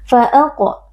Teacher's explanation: huruf qaf, huruf tebal kita baca dengan mengangkat pangkal lidah